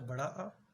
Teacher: विवृत्त में पूरा मुख द्वार खुला रहता है